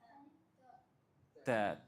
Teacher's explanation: It is a voiceless letter articulated from the top of the tip of the tongue with the roots of the top teeth.